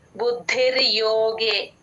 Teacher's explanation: ద కింద దా వత్తు మహాప్రాణం ఉందండి గమనించండి